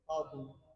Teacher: حمزہ کو حذف کر کے حمزہ کا حرکت نقل کر کے ماقبل طا کو دے دیں گے